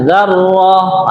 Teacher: ini ro-nya adalah dibaca tafkhim atau tebal